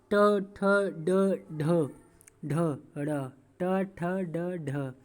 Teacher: टा वर्ग, टा वर्ग को जब आप लोग टा वर्ग बोलिए एक बार, ट ठ ड ढ ढ ड़ ट ठ ड ढ, तो आप लोग देख हमारी जीभ मूर्धा को स्पर्श कर रही है ट ठ ड ढ बोलने पर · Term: मूर्धन्य वर्ण